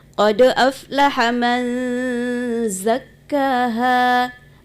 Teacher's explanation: Man itu berjumpa dengan zai itu diikhfakan, disamarkan.